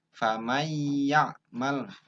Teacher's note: empat huruf yang pertama Meme Wow non ya jadi Gom Bighunnah bunyi n-nya masuk dengan dengung mengikuti bunyi huruf yang ditemui berikutnya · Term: Idgham Bighunnah